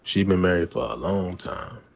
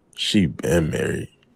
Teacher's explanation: The stress on been indicates that the marriage began in the remote past, so the phrase for a long time is unnecessary. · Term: stressed been